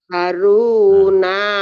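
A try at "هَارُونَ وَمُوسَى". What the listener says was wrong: hanya panjang. Hanya panjang. Haruna wa Musa.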